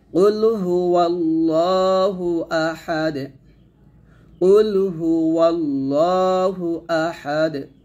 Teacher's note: এখানে ওয়াল্লা না বলে ওয়াল্লাহ বলবে লামটা মোটা হবে